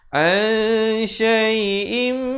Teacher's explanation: Di sini ikhfa hakiki, dengungkan, sembunyikan ataupun samarkan bunyinya di belakang shin, 2 harakat.